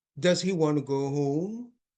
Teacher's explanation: they could help their listener uh get a better idea of what they're asking if they produce this uh rising intonation